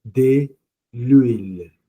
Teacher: it starts with a vowel because we don't pronounce the h it's h mu a so it becomes de l'huile so it